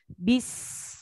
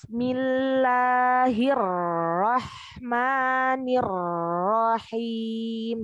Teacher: Ya, jadi jangan ruah, ruah. Bis itu sukunnya dialirkan ya, rokhawahnya.